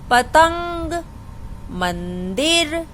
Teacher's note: जो अनुस्वार वाले शब्द होते हैं तो उनको बोलते समय जब हमारे मुंह से आवाज निकलती है तो वो नाक से आती है